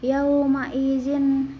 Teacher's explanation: Yauma izin idgham bigunah karena ada tanwin kasroh bertemu huruf nun. Cara bacanya dimasukkan ke dalam huruf nun sambil berdengung.